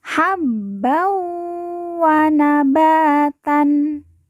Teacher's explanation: dan ditahan dua harakat habb an ban bertemu dengan huruf wau tanwin dileburkan langsung masuk huruf wau kemudian ditekan ditahan dua harakat dan didengungkan · ba kita baca panjang dua harakat karena di depannya terdapat Alif